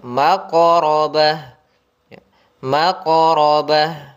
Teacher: Pada lafal maqrabah ada huruf qaf. Qaf ini termasuk huruf qalqalah yang harus kita pantulkan bunyinya